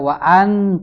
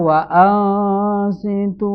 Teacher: ini hukum bacaannya ikhfa. Maka suara nunnya ini dibacanya tidak jelas.